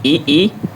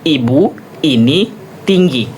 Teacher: vokal I itu vokal bagian atas dan depan. Cara artikulasinya yaitu pada bagian depan lidah.